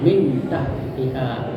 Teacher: Samar antara idegam dan izhar dimasukkan dan terang. Ya, cara membacanya adalah suara nun masih tetap terdengar. Min ya dengar tetapi samar antara idhar dan idgam. · suara nun masih tetap terdengar min, ya, dengar, tetapi samar antara idhar dan idgham. Ya, lagi pula terus bersambung dengan makhraj huruf berikutnya, jadi langsung disambung dengan huruf berikutnya min tahtiha. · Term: ikhfa